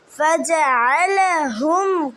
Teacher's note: আইন কণ্ঠনালীর মধ্যখান থেকে উচ্চারিত হবে।